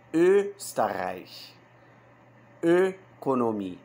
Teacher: a gente vai fazer a boca em U e vai pronunciar E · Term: O umlaut